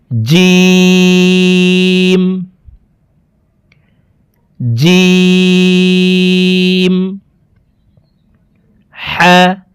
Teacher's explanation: জিব্বার মধ্যখান থেকে জিম হরফের উচ্চারণ করতে হবে।